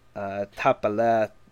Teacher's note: The FH, much like the TH, changes the pronunciation to just an H. Tapalet, the DH at the end of tapa isn't pronounced at all because it's again changed to an H sound